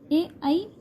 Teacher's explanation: ए ऐ कंठ तालव्य दोनों से होते हैं।